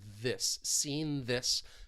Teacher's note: some over there's some coarticulation overlapping sounds with seen this again we're stopping the air with the n and releasing into that voice th